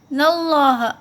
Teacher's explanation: اللہ کا جو لام ہے وہ موٹا پڑا جائے گا